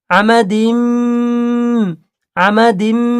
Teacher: ইদগামে নাকিস, এক আলিফ গুণনা হবে